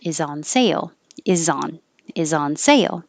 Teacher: i change the s to a z and ladies is also a z